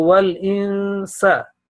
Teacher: sa should not be elongated because after that there is no alif. So wal insa, only 1 second.